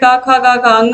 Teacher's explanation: क वर्ग का उच्चारण स्थान कंठ है